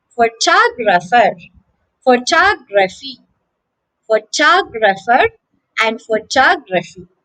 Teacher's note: In these words, the stress is on the second syllable. It becomes a long term and the other vowels become short.